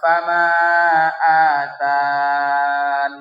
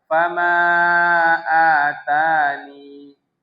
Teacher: Berarti dibaca fama atani cuma dua harakat saja kan.